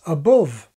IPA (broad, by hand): əˈbʊv